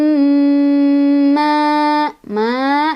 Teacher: Di sini ada gunnah sebab ada mim bertasydid, dibacanya didengungkan dan dengungannya ditahan 2, 3 atau 4 ketukan.